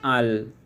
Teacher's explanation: জিহ্বার অগ্রভাগের পাশ ও সামনের উপরের দাঁতের গোড়ার দিকের তালুর সাথে মিললে উচ্চারিত হয় একটি হরফ, এটি হলো লাম